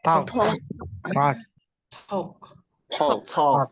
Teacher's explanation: Ya, kalau talk itu tulisannya begini, talk, talcum powder. Ya, kalau TALK itu L-nya tidak dibaca. Jadi L-nya itu dibuang. L-nya itu silent ya. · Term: silent L